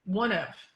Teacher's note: we link that so that we get voicing continuously through that